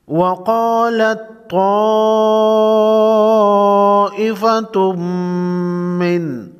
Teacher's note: تنوین کے بعد میم ہے، ادغام مع غنہ ہوگا۔